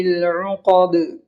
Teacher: اور اسی طرح قاف ہے، موٹی آواز سے پڑھیں گے. دال میں قلقلہ ہوگا اس لیے کہ حروف قلقلہ کے 5 حرف میں سے دال بھی ہے